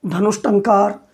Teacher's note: जब एक साथ स और ट बोलेंगे तो स के उच्चारण के लिए हम मूर्धा पर ही चले जाते हैं, तो मूर्धन्य स का उच्चारण हो जाता है। यानी विसर्ग के बाद ट आया तो मूर्धन्य स में बदल गया।